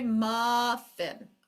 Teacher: in a word like muffin we do not pronounce both the fs so we do not say muff fin muff fin can I